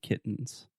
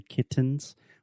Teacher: the only difference between a stop t and a true T is with a stop T I am not aspirating